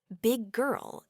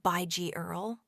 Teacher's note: big girl doesn't usually get two distinct G sounds. It often sounds more like by G Earl with the G sound extended seamlessly. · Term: connected speech